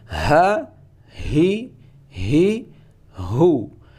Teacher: Ha ini juga keluar dari tenggorokan paling bawah, sama tempatnya seperti hamzah. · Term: huruf ha